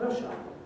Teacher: because this word hour is too long and an unstressed syllable, they smooth it out into R